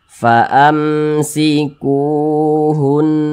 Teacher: Jadi secara singkatnya, rumus mad tabi'i yang di kotak nomor 2 itu, huruf waw sukun pasangannya adalah harokat dhammah atau tanda baca dhammah, sehingga huruf sebelumnya itu dibaca panjang seperti itu. Ini mad tabi'i kita panjangkan 2 harokat.